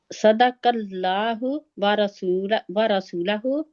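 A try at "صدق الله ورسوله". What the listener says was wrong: रसू लाम के ऊपर जबर नहीं है ना।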